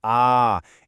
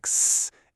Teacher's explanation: For sounds with pitch, like when you say ah, it's a periodic buzz. For sounds without pitch, like s, it's more of a noisy hiss.